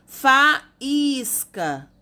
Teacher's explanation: o I tá separadinho do A, é mais forte, acentua também. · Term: hiatos